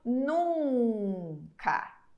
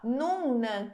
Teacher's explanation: agora o n que vem depois a gente não pronuncia ele fica como ele fica como se fosse uma extensão da vogal